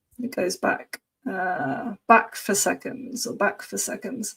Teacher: It would always be for, not f. But the preposition can be for, or more often f when it's not emphasized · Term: weak pronunciation